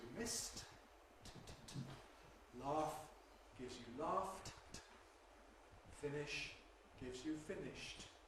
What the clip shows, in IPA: mɪst